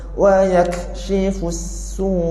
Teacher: wa yakshifus su, ada bunyi u sikit. Maksudnya kita jelaskan hamzah yang terakhir. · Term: hukum nabar